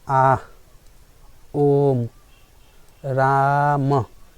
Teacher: फलूत स्वर के उच्चारण में जो है 3 मात्रा के बराबर समय लेता है, इसलिए इसको त्रिमात्रिक शब्द भी, त्रिमात्रिक स्वर भी कहा जाता है।